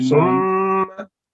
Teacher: It's a gunna sound. You see, mim shaddad and noon mashaddad are both produce gunna sound.